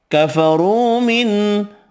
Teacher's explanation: را پیش کی وجہ سے پر پڑھیں گے، واو مدہ ایک الف کی مقدار میں کھینچ کر پڑھیں گے، نون کا اظہار ہوگا۔